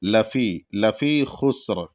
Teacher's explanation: لفی میں فا جو ہے، فا کے بعد یا ہے، تو اس کو ہلکا سا کھینچیں گے کیونکہ یا ساکن ہے، اور جب یا ساکن اس سے پہلے زیر ہو تو ایک الف کے برابر کھینچا جاتا ہے.